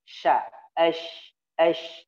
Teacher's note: Huruf yang berada di tengah lidah yaitu huruf sya ya. Tengah lidahnya naik.